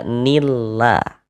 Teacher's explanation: Di sini ada lafaz Allah, sebelah sininya ada harokat kasroh, maka lafaz Allah huruf lam jalalahnya dibaca tarkik, dibaca tipis. Sehingga ini kita baca nillah.